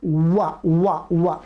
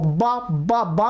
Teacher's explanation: ओठ आपस में मिलेंगे नहीं, मिलने के लिए पास में आना चाहेंगे पर मिलेंगे नहीं। · वकार दंतोष्ठ दांतों के स्थान में तथा ओष्ठ के सहयोग से उच्चारण करने योग्य है